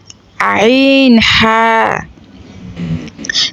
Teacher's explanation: ২ নম্বর মাখরাজ, হলকের মধ্যখান হইতে আইন হা